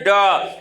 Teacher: इसके उच्चारण में जिह्वा नोक के उलट कर नीचे के हिस्से को कठोर तालु को झटके से छूती है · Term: उच्छिप्त